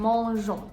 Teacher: You can hear that you're not pronouncing the N consonant.